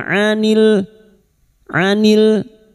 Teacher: anil ain. Jangan samakan dengan hamzah.